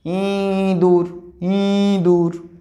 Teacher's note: তখন আমরা ইটাকে উচ্চারণ করছি নাকের সাহায্য নিয়ে উচ্চারণ করছি। দেখো নাকের সাহায্য নিয়ে কিন্তু ই উচ্চারিত হচ্ছে। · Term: সানুনাসিক স্বরধ্বনি